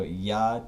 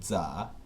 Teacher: So hla to cha. Voiced palatal approximant becomes the voiced alveolar sibilant affricate.